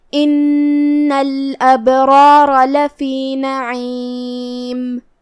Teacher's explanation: عین کو ہم حلق کے درمیان والے حصے سے ادا کریں گے